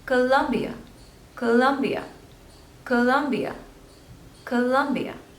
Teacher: So there are 3 syllables and you have to stress on the second one.